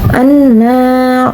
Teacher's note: Hukum tajwid anna yaitu gunnah, karena terdapat nun bertasyid dan bacanya ditahan serta memakai nada dengung ke hidung. Seperti itu.